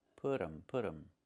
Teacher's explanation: We make a reduction, we say put them. The T changes to a fast D.